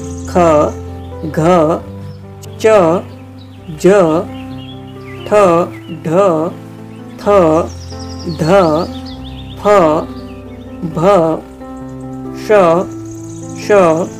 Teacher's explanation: ऐसे वर्ण जिन वर्णों के उच्चारण में श्वास वायु मुखविवर से अधिक मात्रा में बाहर निकलती है, वे महाप्राण वर्ण कहे जाते हैं।